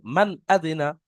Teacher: নুন সাকিনের আওয়াজকে বিনা গণ্যায় জাহির করে তাড়াতাড়ি পড়তে হবে, একে ইজাহার বলা হয়।